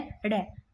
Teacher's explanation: इसको द्विस्पर्श भी बोलते हैं, यानी कि जीभ के 2 बार स्पर्श करने से उत्पन्न, 2 बार ऐसे जीभ के स्पर्श नहीं करता, टच नहीं करता। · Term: उच्छिप्त व्यंजन